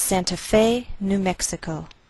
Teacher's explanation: place the most stress on fey that's our primary stress